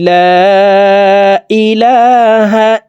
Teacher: এ লামের উপরে খাড়া জবর দিব এখানে জবর আছে ভুল আছে আমরা খাড়া জবর দিয়ে এই লামকে এক আলিফ টেনে পড়বো